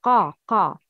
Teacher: an elevation of the tongue to the upper soft palate when pronouncing a letter. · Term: isti'la